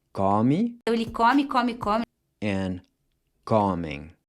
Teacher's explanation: the pronunciation changes from a closed O to an open O, which is like the A in awesome. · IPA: /ɔ/